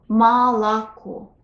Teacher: It's spelled with 3 letters O, but when we pronounce it, we only hear one O in the final syllable, which is stressed.